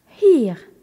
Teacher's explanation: Quant à hier, H-I-E-R avec le H aspiré et le E qui prolonge le I